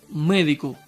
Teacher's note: La sílaba tónica es me, que es la antepenúltima y siempre lleva tilde.